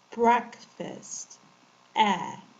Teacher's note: It doesn't sound like A. It's more of an eh when you're opening your mouth wide.